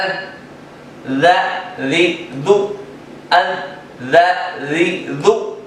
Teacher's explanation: ذال کی ادائیگی زبان کی نوک اور اوپر کے دانتوں کے کناروں سے لگا کر پڑھنے سے ذا ادا ہوتا ہے